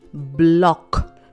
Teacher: Bl is a consonant blend. In bl, we can hear both b and l sounds clearly.